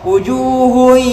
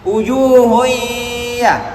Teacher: Saya baca dengan dengung, berarti kalau hidung saya tutup, bunyinya tidak bagus.